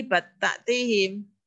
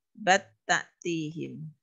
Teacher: Karena ketika huruf ini diidgham ke huruf yang di depannya, lamnya bal diidghamkan ke sini, berarti seolah-olah taknya bertasydid.